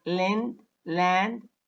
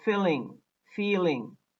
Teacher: air stream to escape along the sides of the tongue now the air leaves the mouth through the sides of the tongue not from the center of the mouth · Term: lateral consonant